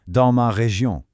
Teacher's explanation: Did you notice that beautiful nasal sound in région?